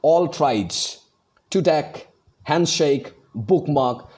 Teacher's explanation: Both the syllables are stressed.